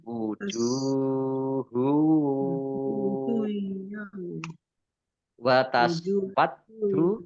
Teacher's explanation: Domah tanwin bertemu dengan huruf wawu, bacaan idgham bi gunnah, masuk dengan mendengung, yaitu mendengung wawu,